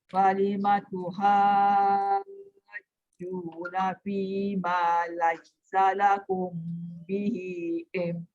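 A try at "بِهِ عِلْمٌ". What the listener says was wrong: Bihi ilm. Dia kena pastikan lam tu. Bihi ilm. Memang bunyi mim tapi lam kena jelas dulu.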